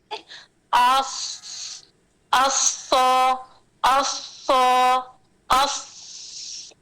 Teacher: सफीर सुनाई देगी लेकिन मोटी सुनाई देगी